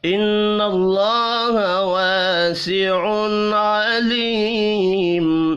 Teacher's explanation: تنوین کے بعد حروف حلقی ہے, یہاں پر اظہار حلقی ہوگا, غنہ نہیں ہوگا